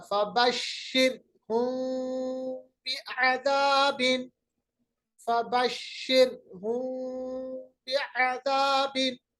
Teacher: तो आवाज जो है वो हल्के होंठों के साथ, यानी होंठों को हल्के तरीके से मिलाएंगे और आवाज को हम बीच में से निकालेंगे छुपा के, पूरा गुन्ना करने नहीं देंगे, अदरवाइज ये इदगाम हो जाएगा। · میم کی آواز کو غنہ نہیں کریں گے، بہت ہلکا غنہ کریں گے اور آواز کو ہلکے ہونٹوں کے ساتھ ملائیں گے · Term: اخفا